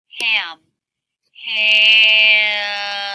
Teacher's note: you can hear the sound as my tongue relaxes down in the back before the lips close for the M sound. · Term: nasalization